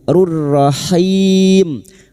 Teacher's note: bertemunya mad dengan huruf hidup yang dibaca waqaf mad arid li sukun 4 harakat kita panjangkan